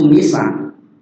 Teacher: Sebelum huruf terakhirnya waqaf. Ya, sebelum huruf terakhirnya itu huruf sa. Dia dibaca panjang, sa-nya panjang. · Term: mad arid lis sukun